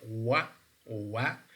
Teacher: wa, which is a semi-vowel, is voiced labial velar. Means that, okay, when we are producing wa, we feel more vibration on our vocal folds, and moreover, this is labial.